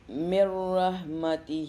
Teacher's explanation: یہاں پہ نون کو بالکل نہیں پڑھیں گے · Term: کمپلیٹ ادغام